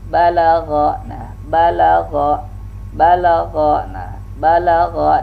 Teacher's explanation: ba safawi, pertemuan bibir atas dan bibir bawah, dan dia termasuk syiddah, tertahan.